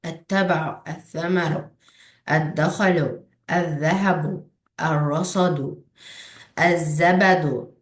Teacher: İdğam şəmsiyyədə isə ləm açıq aydın oxunmur deyə, ona görə idğam şəmsiyyə deyirlər.